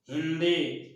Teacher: हिंदी में दंत ना का उच्चारण हो रहा है